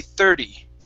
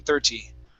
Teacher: you would pronounce the t like a d or a flap t